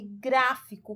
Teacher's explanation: Se a sílaba vem com acento agudo ou circunflexo, você sabe que aquela ali é a sílaba tônica. Então, o gra é a sílaba tônica. Observe que é a terceira sílaba de trás para frente, ou seja, a antepenúltima sílaba. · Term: proparoxítonas